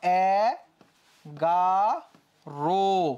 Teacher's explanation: বানানের ক্ষেত্রে ওকার হবে না উচ্চারণের ক্ষেত্রে ওকার হবে বানানে তো ওখানে অ ছিল 11 বানানে ওখানে কি ছিল অ